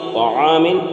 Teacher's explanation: طعام طا ہے، تا کے مخرج کو صحیح کرنا ہے، تا کو موٹا کر کے پڑھتے ہیں